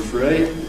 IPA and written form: frə̯i (three)